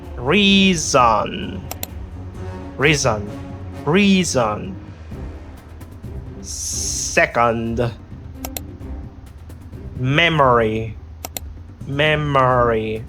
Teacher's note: the reduced O as in uh uh this is the shwa sound